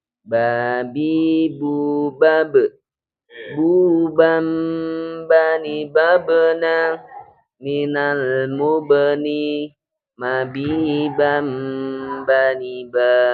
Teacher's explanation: huruf ba makhraj hurufnya di kedua bibir